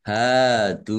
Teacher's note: dal domah wawu sukun juga mat tobi'i panjang 2 harokat